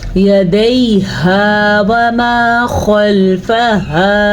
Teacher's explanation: खा को पुर पढ़ेंगे और हा को हा ही पढ़ेंगे, सीने से आवाज़ निकालेंगे।